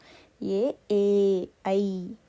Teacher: ಕಂಠ್ಯ ಮತ್ತು ತಾಲು ಎರಡು ಭಾಗದಿಂದ ಸಹ ಉಚ್ಚರಿಸಲ್ಪಡುವ ಅಕ್ಷರಗಳು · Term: ಕಂಠ ಮತ್ತು ತಾಲವೇ